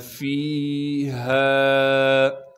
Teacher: ہاں کو صاف کر کے گلے سے نکالیں گے، گلے کا وہ حصہ جو سینے کی جانب ہے۔ ہاں کے بعد الف مدہ ہونے کی وجہ سے ہاں کو ایک الف کے مقدار کھینچیں گے۔